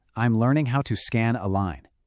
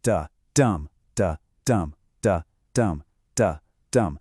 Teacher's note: Our sentence breaks down into 4 identical chunks. Each one is an unstressed syllable followed by a stressed one, duh-dum. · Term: iamb